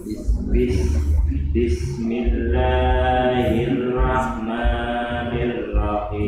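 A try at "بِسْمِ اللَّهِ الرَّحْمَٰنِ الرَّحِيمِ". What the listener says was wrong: Ya, bukan hirah ya. Hirah. Tebal. Hirrahmanirrah. Nirra.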